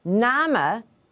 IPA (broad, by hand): namə